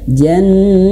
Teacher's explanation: maka menjadi ha nah ha besar ya ha yang ada di pangkal tenggorokan jannah ah dialirkan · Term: ta marbutah